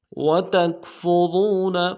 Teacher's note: تا کو بھی نرم سے ادا کریں گے لیکن فا کے ساتھ ملانا ہے